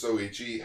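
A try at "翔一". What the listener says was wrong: You said Soichi. An H.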